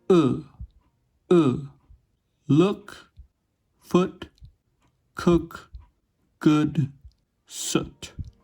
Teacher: The sound is produced with a lower tongue position, closer to what we'd call a mid-high position, as we can see from the quadrilateral. It's made with moderately rounded lips, and it's shorter and produced with a more relaxed tongue. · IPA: ʊ